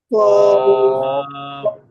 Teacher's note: জিহ্বার গোড়া তার বরাবর উপরে তালুর সঙ্গে লাগাইয়া উচ্চারিত হয় কফ। কফ জিহ্বার গোড়া কফ উপরে তারপর আবার উপরে তালুর সঙ্গে লাগানোর চেষ্টা করি, কফ।